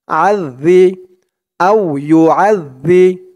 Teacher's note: জালের উচ্চারণটা এখানে একদম নরম হবে জিহ্বার মাথা উপরের দাঁতের মাথার সাথে লাগবে